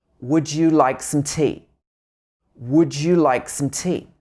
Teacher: here we would stress that would like and tea